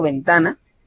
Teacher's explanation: ventana tiene la sílaba tónica a mitad y no se acentúa.